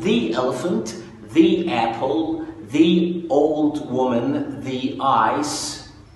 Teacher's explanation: وأحيانا بتنطق ذي في أحوال قليلة أوي لما بيبقى الاسم اللي جاي بعدها بيبتدي بـ vowel sound، صوت متحرك. الحروف المتحركة أو الأصوات المتحركة هي الـ A والـ O والـ E والـ I والـ U.